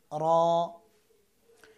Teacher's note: র একবার কম্পন হবে